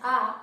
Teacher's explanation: जब आप उच्चारण करते हैं आ, तो हमारी जीभ का जो मध्य भाग होता है, जीभ का जो हमारे मध्य भाग होता है उसका प्रयोग हम करते हैं आ कहने में। तो इस तरह से हम इसको कहते हैं मध्य स्वर।